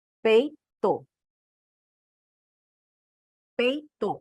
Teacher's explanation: O decrescente é o contrário. Ele começa vogal e decresce para uma semivogal. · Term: ditongo decrescente